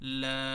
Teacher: তো এই যখন এই যে এক আলিফ মাদ পরে স্থায়ী সুকুন, এই কারণে এখানে 3 আলিফ মাদ দিয়ে পড়তে হয়